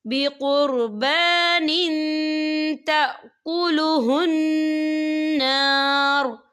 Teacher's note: وقف کی صورت میں را جو ہے ساکن ہو جائے گا، ہم کیسے پڑھیں گے؟